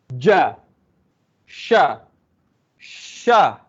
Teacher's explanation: ja dengan sya ni tempat dia di pertengahan lidah ni. Dia bukan hujung lidah. Pertengahan lidah ni. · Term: Jim dengan shin